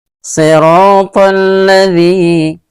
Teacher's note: Jadi alif lam yang pertama merupakan alif lam syamsiah yang sukun, dan lam yang kedua merupakan huruf syamsiah yang berharokat, ya. Jadi alif lam yang pertama yang sukun dileburkan atau dimasukkan ke dalam lam yang berharokat